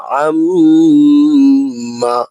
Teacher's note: এইযে মিমের উপর তাসদিদ নুনের উপর তাসদিদ হরকতের পরে এখানে একটু সময় নিবেন। লম্বা টানের মত গুনাটা দিবেন